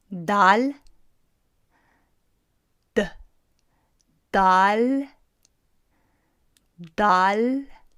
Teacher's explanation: the end position of the tongue in dal is going to be you placing the tip of the tongue behind the top set of teeth